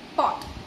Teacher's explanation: my jaw depresses, and due to the co-articulation effect, my tongue simultaneously elevates to touch the alveolar ridge for the t